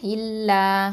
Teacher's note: லாம் ஃபதா, அலிஃப் மது, லா 2 அலிஃப் நீட்டுவோம்